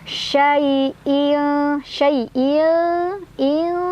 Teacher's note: tanwin kasrahnya dibaca samar-samar sambil berdengung, di mana tingkat kesamarannya sama dengungannya seimbang. Kenapa? Karena shin makhraj hurufnya tidak terlalu dekat dan tidak terlalu jauh dari nun. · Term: ikhfa ausat